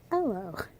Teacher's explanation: the strange thing about Jamaica and Patois is that you would have a word, any word, but you have to take off the H